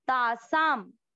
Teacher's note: तासा शब्द पूरा होने के बाद अनुस्वार, तो उसको आधा म